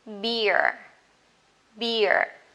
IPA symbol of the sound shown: bɪə